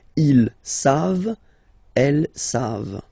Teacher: E-N-T, you don't pronounce it, so you get the sound savent, v-v-v-v, savent, okay?